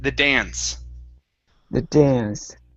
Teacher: the a sound here this is going to be an ah sound